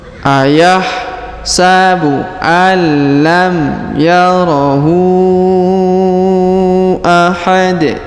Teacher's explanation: Kemudian huruf tanwin un kita rubah menjadi nun sukun karena rubah menjadi sukun ya, mohon maaf, karena sudah berada di ujung ayat atau di ujung bacaan. Tanwin unnya kita hilangkan ya, kita rubah menjadi sukun ahad dan kita baca pantul.